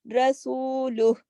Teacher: رسول، را موٹا ہوگا، را پہ زبر ہے